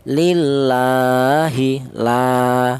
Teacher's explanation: Kemudian lillahi di sini ada lam jalalah di mana di atas lam jalalah ada harakat berdiri yaitu menunjukkan bahwa huruf tersebut dibaca panjang yaitu satu alif atau dua harakat atau dua ketukan